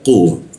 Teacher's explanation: Kita naikkan kun-nya itu sehingga tidak ada hembusan udara ketika membaca qu